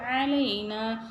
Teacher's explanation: ஐன் பாருங்க தொண்டையில இருந்து கரெக்டா சொல்லணும்